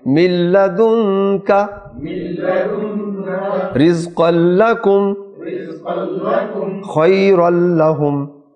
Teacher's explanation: لام پڑھا جائے گا، نون نہیں پڑھا جائے گا